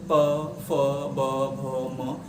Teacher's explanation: ठीक, जब आप इनको बोलोगे प, फ, ब, भ, म, तो आपके जो जीवा है, आपकी जीवा का रोल नहीं इसमें, होठ, आपके जो होठ हैं परस्पर एक दूसरे को टच करेंगे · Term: ओष्ठी